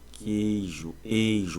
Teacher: Em queijo tem um ditongo decrescente.